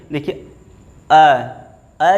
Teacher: बोल करके देखिए अ जैसे ही आप बोले हैं यहाँ गले से निकल करके सीधे मुंह के बाहर, ना तो तालव्य को टच कर रही है, ना दंत को, ना ओष्ठ को, मुंह खुला रह जा रहा है, यानी किसी भी मुखांग को ये स्पर्श नहीं करते हैं। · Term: स्वर